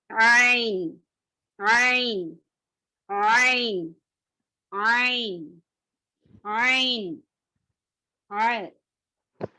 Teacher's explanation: یہ حلق میں رہنے والا ہے، الحلق کے بیچ کے حصے سے ادا ہونے والا ہے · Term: حلق کا لیٹر